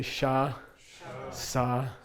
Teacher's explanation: They're both sibilants, meaning S sounds, and they're both low tone.